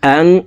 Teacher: নুন সাকিনের পরে ইকফার 15টি হরফের ভিতরে একটি হরফ তা আসছে, এই কারণে এই নুন সাকিনকে নাকের ভিতরে লুকাইয়া গুন্নার সহিত পড়তে হবে।